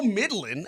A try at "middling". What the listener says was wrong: You say Midland, like the city in Texas. You're pronouncing it Midland.